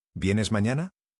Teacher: Debe tener una elevación clara hacia el final, para que sea entendida como pregunta y no como una afirmación.